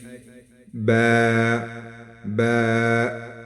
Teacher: جب دونوں ہونٹ آپس میں مل جائے تو اس سے با ادا ہوتی ہے